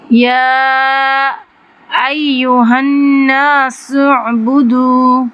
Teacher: نون مشدد ہے، ایک الف برابر غنہ ہوگا